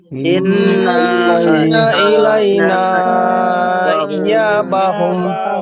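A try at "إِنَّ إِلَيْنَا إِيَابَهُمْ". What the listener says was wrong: এখানে টান হবে না, গুণনা হবে। ইন্না ইলাইনা ইয়াবাহুম। গুণনা করুন ভাই, ইন্না গুণনা করুন। ইন্নাটা গুণনা করুন, টান দেবেন না।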